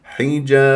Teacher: قبلها ميم مفتوح م طبيعي حركتين ح حجا شوف كسره الحاء والباء ستسكن اخر الكلام قلقله كبرى